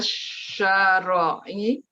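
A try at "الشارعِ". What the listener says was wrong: Syari'. Ri, bukan ro. Ri. Jadi kalau misalkan ada kata ism, kemudian huruf pertamanya fathah panjang, biasanya huruf setelahnya itu kasroh, gitu ya. Syari', katib, nafidah. Biasanya seperti itu.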